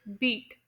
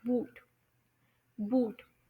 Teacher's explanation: आपकी जुबान मुंह के अंदर हाई पर हाई लेवल पर पोजीशन होती है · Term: हाई वोल्स